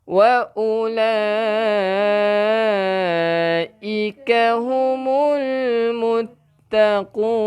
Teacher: Wa ula ni panjangnya 5 harakat.